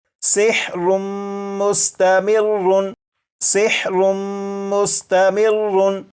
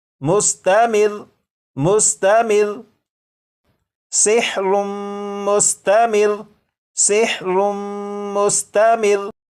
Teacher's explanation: लेकिन जब वक्फ में पढ़ेंगे तो ये जो लफ्ज़ है इस लफ्ज़ के रा के ऊपर जो तशदीद है इसे तो पढ़ेंगे, लेकिन रा के ऊपर जो 2 पेश हैं इन्हें ख़त्म कर देंगे। और ये जो लफ्ज़ है मुस्तमिर्रुन, वक्फ में ये पढ़ा जाएगा मुस्तमिर मुस्तमिर सिहरुम मुस्तमिर सिहरुम मुस्तमिर।